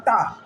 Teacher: इन व्यंजनों का उच्चारण करते समय जिह्वा, जो जिह्वाग्र है यानी जिह्वा के आगे वाला भाग, कठोर तालु के पिछले भाग से स्पर्श करता है। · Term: मूर्धन्य व्यंजन